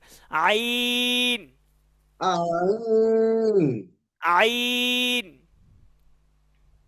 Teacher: আইনটা একটু গলার মাঝখানে দেখ এইযে আমরা হা যেখান থেকে উচ্চারণ করেছি আইনটা সেখান থেকে উচ্চারণ করতে হবে